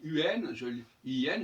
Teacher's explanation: Mais il se trouve qu'en français, les deux formes se prononcent de la même manière, en tout cas aujourd'hui.